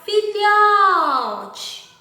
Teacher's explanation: o lhó sai com mais força, mais forte. Então, é a sílaba tônica.